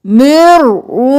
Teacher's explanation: हा गले के दरमियान से, हा सीने की तरफ से निकालना है।